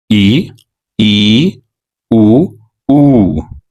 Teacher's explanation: याद रख पाएंगे अगला स्वर का प्रकार है संवृत स्वर यह ऐसे स्वर है जिनके उच्चारण में मुह लगभग बंद रहता है या बहुत ही कम खुलता है